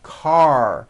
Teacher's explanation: Your tongue has to pull back. Car. And also your lips close a little bit in the front. The R needs to be very strong and you need to close the word.